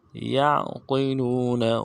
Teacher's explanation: عین موٹے حروف میں سے موٹا کریں گے اور عین میں آواز جاری رہے گی